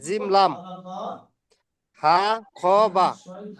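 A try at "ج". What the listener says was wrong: হা আবার বললাম, ওটা খ নয়, নিচে নোক্তা হলে খ নয়, উপরে নোক্তা হলে তারপরে খ বলে, নিচে নোক্তা হলে তাকে জিম বলে।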